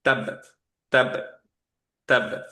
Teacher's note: First কিন্তু stop করে তারপর একটা কলকলা দিব।